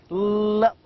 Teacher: The tongue touches the roof of the mouth, and we can feel that the air passes out of the two sides of the tongue. Now the L sound is called as lateral liquid and formed by letting the air stream flow around the sides of the tongue as the tip of the tongue makes contact with the middle of the alveolar ridge.